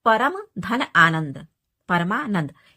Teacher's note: आनंद का आ अ के योग से जो है दीर्घ आ बन रहा है यानी बड़ा आ बन रहा है